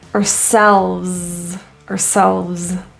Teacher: word our is typically reduced to a quick s ourselves and the S at the end is voiced